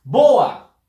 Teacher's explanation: Fuerza de voz en bo